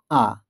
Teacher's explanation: শেষে আছে আ দেখে উচ্চারণ করতে গেলেই আমরা দেখতে পাচ্ছি এটি আমাদের জীবের অবস্থান পুরো শেষে নিচে নেমে আসছে তাই পুরো নিচে থাকছে বলে একে নিম্ন স্বরধ্বনি বলা হচ্ছে